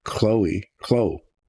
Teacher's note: you're accenting the first syllable